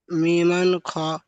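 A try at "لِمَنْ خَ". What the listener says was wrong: মি নয়, লিমান খ।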